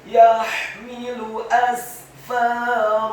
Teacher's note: Huruf fa-nya dibaca fathah 2 harokat karena setelahnya ada alif. Dan huruf ra-nya dibaca tafkhim tebal, fathah 2 harokat.